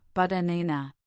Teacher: The stress is on the second syllable. The first and last syllables are both pronounced as a schwa, banana. This is the secret to a natural rhythm.